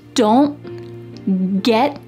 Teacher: my tongue is stopped at the top of my mouth. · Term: stopped t